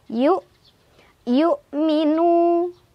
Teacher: Walladzina yu, tekan lagi ya tanpa ekor, yu minu, nu mad tabi'i karena ada waw sukun sebelumnya ada dhammah di nun dibaca panjang dua harokat